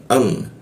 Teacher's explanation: a masuk ke mim, bibir bertemu bibir.